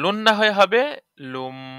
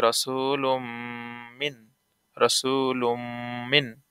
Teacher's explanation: তো লুন না হয়ে হবে লুম, কারণ নুন সাকিনের ঈদগাম মিমে করলো ঈদগাম মিমজের মিমি লাগবে নুনের সাথে মিন, তাহলে রসুলুম মিন, রসুলুম মিন।